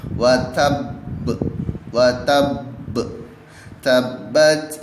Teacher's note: Qalqalah itu berharakat tasydid makan namanya adalah Qalqalah Akbar oleh karenanya cara membaca Qalqalah Akbar bukan hanya dipantulkan namun ditekan terlebih dahulu